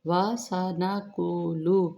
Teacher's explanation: قوف کو موٹا پڑھیں گے